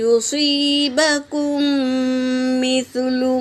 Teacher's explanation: با حرکت ہے، کاف حرکت ہے، میم پر سکون ہے، تو پہلے والے میم سے دوسرے والے میم کو ملا کر غنّے کے ساتھ پڑھیں گے، اسے ادغام شفوی کہتے ہیں۔